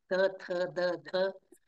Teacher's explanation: जीभ दातांना स्पर्श करते त्यामुळे ते स्थान कोणता आहे दंत